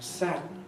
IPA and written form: ˡsædn (sadden)